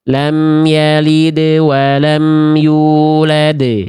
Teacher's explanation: Lam yalid qalqalah sugro, walam yulad qalqalah kubro. Pantulannya lepas semuanya.